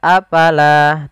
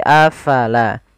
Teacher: Fa harus alirkan nafasnya